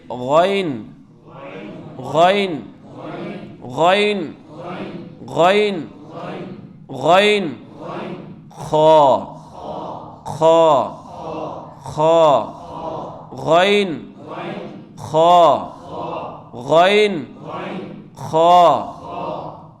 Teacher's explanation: ایک سٹیپ اوپر جو منہ کی جانب والا گلے کا حصہ ہے، تو اس کو ہم کہتے ہیں ادنا حلق